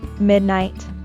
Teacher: The word midnight is stressed on the first syllable.